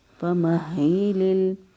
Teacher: ہا جو ہے اس کو ہم نے اقصی حلق سے ادا کیا اور مضبوطی اور قوت کے ساتھ پڑھا کیونکہ اس کو پر شد ہے، فَمَهِّلِ لام کو لام سے